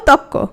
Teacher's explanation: রটা চলে গেল আর তটা কি হয়ে গেল? দ্বিত্ব হয়ে গেল